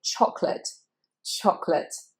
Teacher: It's only 2 syllables, and that middle A is not pronounced